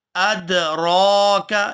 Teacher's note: یہاں را کو پورا ادا کریں گے اور کھینچ کر ادا کریں گے کیونکہ اس کے اوپر کھڑی زبر ہے